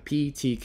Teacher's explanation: voiceless there is no vibration of throat unaspirated there's no air coming off of it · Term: unaspirated stops